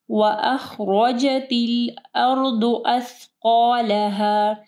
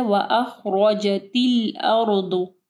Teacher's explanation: وَأَخْرَجَتِ الْأَرْضُ أَثْقَالَهَا. را کو ہیوی پڑھنا ہے، را کے اوپر زبر ہے